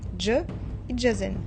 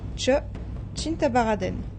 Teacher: une consonne composée de 2 consonnes prononcées directement l'une à la suite de l'autre. L'air est accumulé par la première et transféré directement pour prononcer la deuxième. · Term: consonne affriquée